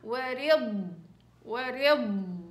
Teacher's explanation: اعطي زمن الضاد وسكنيها وثبتيها مع رخاوة الضاد ما تنسوش